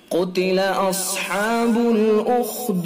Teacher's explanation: قاف کو پر پڑھیں گے، چونکہ حروف مستعلیہ میں سے ہیں قاف، اس وجہ سے قاف کو پر پڑھیں گے۔